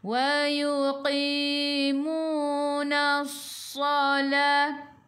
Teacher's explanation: Sad sifat hurufnya safir kena bunyikan.